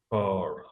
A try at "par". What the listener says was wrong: Push it out. I have to hear you pushing out the air. It's a really disgusting sound. Par.